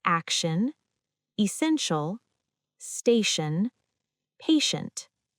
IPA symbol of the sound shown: ʃ